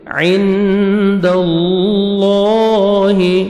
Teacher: اللہ، اللہ سبحانہ و تعالیٰ کے نام سے پہلے زبر ہے، آپ نے لام کو موٹا بھی کرنا ہے اور پر بھی کرنا ہے اور 1 سیکنڈ لام کو آپ نے کھینچنا بھی ہے ، صوت پہ آپ نے سٹاپ نہیں کرنا، ملا کے پڑھیں